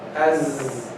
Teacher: The Zai is Majhur, means what? Voice, no breath with it.